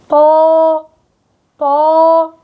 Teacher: ما ننسى إنه الحرف فيه تفخيم، الحرف أيضا مفخم، بيرتفع عندي أقصى اللسان ووسط اللسان، فبصير هيئة التفخيم ويتفخم الحرف